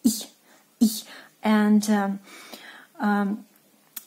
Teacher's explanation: It's like E, but very short one, like I. You just starting to speak E, but you cut it shortly, like I, I.